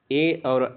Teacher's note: ए और ऐ दोनों ही कंठतालव्य होते हैं।